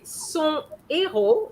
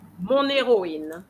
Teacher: son héros, no link, no liaison, but mon héroïne